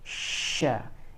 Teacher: udara itu keluar di mulut, berputar di mulut ketika sebelum huruf shin itu keluar. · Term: sifat tafasyi